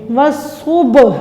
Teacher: واو صا زبر وص، صاد، با پیش صب، با ساکن ہے تو یہ حروف قلقلہ بھی ہے، اس کو جنبش دے کے ہلا کے قلقلہ کر کے پڑھیں گے